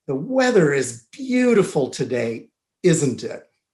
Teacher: make a statement and then follow it with a tag question with falling intonation